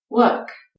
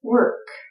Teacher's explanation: in British English, they take out the R sound when it's in the middle or at the end of a word. So a British speaker says work, and an American speaker says work.